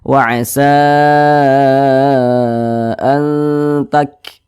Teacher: Cara mengucapkan huruf kaf sukun itu ada nafas yang mengalir ketika kita mengucapkannya. Tak, seperti itu.